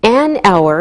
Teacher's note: We say an hour because we don't pronounce the H, so it sounds like a vowel sound.